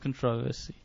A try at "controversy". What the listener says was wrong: I think you just accentuated the wrong syllable.